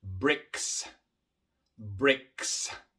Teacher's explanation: Igual aquí tenemos una K. La K es una consonante sorda y por eso la S que viene después es sorda.